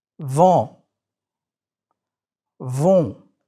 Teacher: You are letting air go through your nose and your mouth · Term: nasal vowels